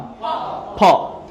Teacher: এই ফ এর বৈশিষ্ট্য হচ্ছে এটা উপরের দাঁত এবং নিচের ঠোঁট লাগিয়ে বলতে হবে